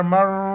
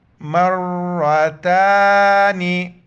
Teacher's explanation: اوپر زبر ہے تو را کو موٹا کر کے پڑھیں گے، کڑا زبر ہے، ایک الف کی مقدار کھینچنا ہے۔